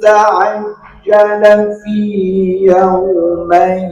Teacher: Kalau mad thabi'i dua harakat, kalau mad lin atau harfulin jadi satu harakat setengah berarti enggak sampai dua harakat